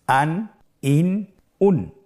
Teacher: প্রত্যেকটি উচ্চারণের শেষে দন্ত ন উচ্চারিত হচ্ছে